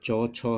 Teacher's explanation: चौ, छौ है तालव्य वर्ण, तालु से इसको बोलते हैं